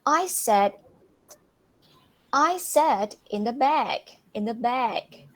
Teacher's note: So the emphasis was put on the word back.